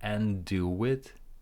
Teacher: we cancel the D, and do it, linking as well